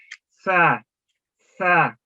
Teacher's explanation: لیکن سا جب ادا کرتے ہیں تو بالکل سیٹی کی آواز نہیں آتی، بالکل نرمی کے ساتھ یہ ادا ہوتا ہے